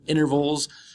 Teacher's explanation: the T disappears in American English